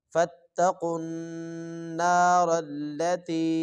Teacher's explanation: قاف کو آگے ایک تو موٹا کریں گے اور آگے نون کے ساتھ اس کو ملائیں گے اور اس پر غنہ بھی کریں گے، اور را کو جب پڑھیں گے تو آگے موٹا کر کے پڑھیں گے.